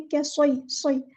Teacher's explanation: स्वाद को मोटा अदा करना है, हेवी लेटर है और सीटी लेकर आनी है। कैफ़य्यिबिन नहीं है, कैसॉय, सॉय, और या बारीक अदा करनी है।